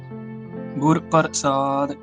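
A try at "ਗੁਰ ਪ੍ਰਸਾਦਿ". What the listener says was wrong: वाहिगुरू नहीं पप्पा रारा नहीं करना, प्रसाद जिवें प्रिया कह दिंदे आ ना ਆਪਾਂ नहीं प्रसाद हाँ जी बस तेज बोलना है। इकट्ठा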